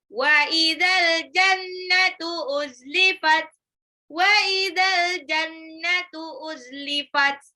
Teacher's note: Wa idza dan apabila al jannatu jannah surga uzlifat didekatkan. Wa idzal al jannatu itu alif lam qamariyah alnya dibaca jelas. Nunnya gunnah.